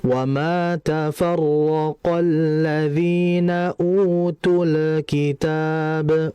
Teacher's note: mengalirkan lamnya itu dengan ujung lidah ee nempel ke atas ya ke langit-langit atas atau disebut dengan alhanakl a'la. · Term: izhar al-qamariyah